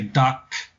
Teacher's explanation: In English we would say dak, and it would be aspirated, meaning that that puff of air would come out. But in Cantonese, it's not.